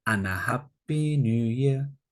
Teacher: also the D can be taken out so it could be and a Happy New Year We wish